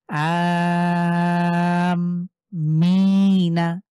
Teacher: আকে আমরা চার আলিফ টেনে পড়বো প্লাস আমরা মিমের উপরে আবার গুন্না করবো কারণ এখানে তাসদিদ হয়েছে মিমের উপরে